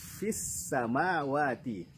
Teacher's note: Ada nafas yang mengalir juga ketika mengucapkan huruf fa.